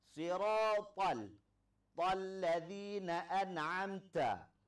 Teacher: Huruf ta ini pengucapannya ada keluar lidah sedikit. Sama seperti pengucapan huruf sa.